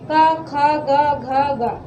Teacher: ये भी कहाँ से उच्चारण है इनका, तो इनका भी कंठ से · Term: का वर्ग